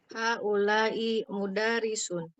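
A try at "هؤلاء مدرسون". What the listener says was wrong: Haula'i mudarrisuna. Mudarri, bukan mudari. Roknya ada tasdid.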